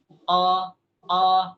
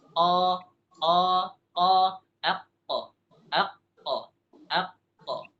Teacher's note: Pangkal lidah pangkal lidah sama apa sama langit-langit yang lembut yang yang dagingnya qo qo bisa dirasakan itu ada yang lembut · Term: qf